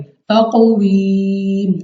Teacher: تو اس لیے ہم نے اس کو منہ اور آواز کو کھول کر پڑھنے کے ساتھ ساتھ ہم نے اس پہ قلقلہ بھی کرنا ہے یعنی ہمارے مخرج میں جنبش سی ہونی چاہیے